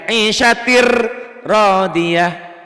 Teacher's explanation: Tuh bunyi N-nya hilang. Ke R. Dimakan. Melebur. Ditelan ro. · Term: idgham bila gunnah